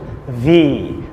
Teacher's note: ভি, ভি, ভি, it's not ভি, উপরের দাঁত নিচের ঠোঁট, ভি